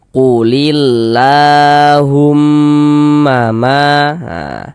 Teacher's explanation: la dibaca panjang mad thobi'i panjang dua harakat